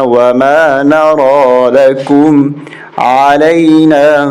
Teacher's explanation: نون کے بعد را کھڑا زبر ہے اور یا خالی، یا کو نہیں پڑھنا